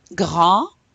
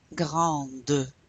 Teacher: So again, when we add the E, we're pronouncing that final consonant.